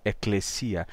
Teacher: tônica em grego é determinada pelo acento melódico da palavra então o i de eclesia essa sílaba ela tem um acento mais agudo eclesia e o acento melódico termina determinando a vogal tônica depois